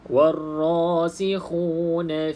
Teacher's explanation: Jadi terus masuk dalam ra, tanpa kita bunyikan wal ra, terus masuk dalam huruf bersabdu. Mana-mana huruf yang bersabdu, tuan-tuan dan puan-puan, terus je masuk huruf tersebut. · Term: alif lam syamsiyah